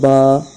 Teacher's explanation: الف مدہ کو ایک الف کے برابر کھینچ کر پڑھیں گے